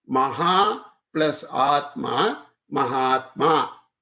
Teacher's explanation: This, this is Dirgha, long, and this is long. The Ha has H and A in it, long A, and Atma has a long A, so it becomes Mahatma.